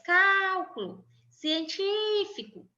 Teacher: Veja aqui a antepenúltima sílaba é a sílaba mais forte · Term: proparoxítonas